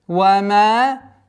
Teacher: Удлиняем в размере 2 огласовок фатхи.